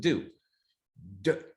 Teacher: i'm stopping before i get to the u but my lips are already anticipating the production of that vowel and that's what co-articulation is co-articulation